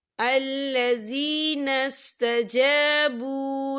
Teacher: وَفَضْلٍ وَأَنَّ اللَّهَ لَا يُضِيعُ أَجْرَ الْمُؤْمِنِينَ الَّذِينَ اسْتَجَابُوا لِلَّهِ، یا دیکھیں الَّذِينَ اسْتَجَابُوا، یہاں پہ واو مدہ ہو رہا ہے، واو ساکن ہے، واو ساکن سے پہلے پیش ہے، تو ہم اسے 2 یا 3 عدد کے برابر کھینچے پڑھیں گے۔ · یہاں پر اللہ کا نام باریک پڑھا جائے گا، کیونکہ اللہ کے نام سے پہلے زیر ہے۔